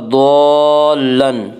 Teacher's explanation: ضاد کو پر پڑھا جائے گا۔ ضاد حروف مستعلیہ میں سے ہے۔ حروف مستعلیہ 7 ہیں جن کا مجموعہ خص ضغط قز ہے، جو ہمیشہ ہر حال میں پر پڑے جاتے ہیں۔